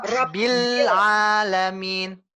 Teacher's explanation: Bil bersih. Bersih dari ain.